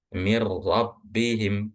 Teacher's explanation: Jadi seakan-akan nunnya itu nggak ada dan roknya itu berharakat tasdid. Ingat, perlu diperhatikan bahwa roknya itu berharakat tasdid.